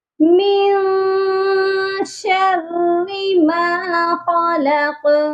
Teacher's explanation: خلق کے قاف کو بھی موٹا کرنا ہے اور قلقلہ بھی کرنا ہے